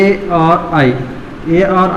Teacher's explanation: ए और आई का उच्चारण स्थान कंठ तालु से होगा